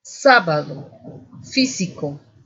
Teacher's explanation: La ubicación del acento se encuentra en la antepenúltima sílaba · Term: esdrújulas